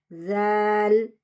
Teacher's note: ஜால் சொல்லும்போது நுனி நாக்க வெளியே வச்சு சொல்லணும்.